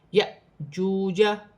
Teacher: واو ساکن سے پہلے پیش ہے تو واو مدہ بنے گی، اسے ایک الف کی مقدار کھینچ کے پڑھا جائے گا